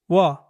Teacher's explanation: If you say the two sounds one after the other, you'll get the sound of this letter. In fact, this letter is pronounced by blending u and uh together quickly